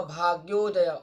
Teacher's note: तो ओ जो है, ओ का उच्चारण कंठ ओष्ठ है।